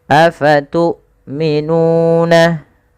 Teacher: Kemudian ketika kita melafalkan tu'minuna, hamzahnya harus ditahan suaranya dan ditahan nafasnya.